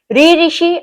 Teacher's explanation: आप बोल के देखिए आपकी जीभ जो है मूर्धा पे जाके अटकेगी, तो री ऋषि के मूर्धा पे।